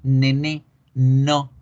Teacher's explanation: la n es alveolar nasal no voy a cerrar la boca completamente pero lo que voy a hacer es que la lengua la · la lengua la punta toca los alveolos y hace que el aire se vaya por la nariz